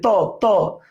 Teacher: জিহ্বার আগা দাঁতের আগাইতে লাগাতে হবে, এই কারণে এটাকে বলবো আমরা দন্তবর্ণ।